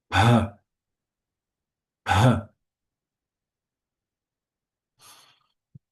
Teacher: This is the aspirated p.